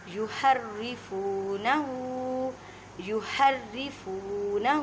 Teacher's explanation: را کو باریک پڑھیں کیونکہ را کے نیچے زیر ہے۔ من بعدی، اب دیکھیں نون ساکن ہے، نون ساکن کے بعد با ہے، اب یہاں پہ اقلاب کا قاعدہ کرنا ہے۔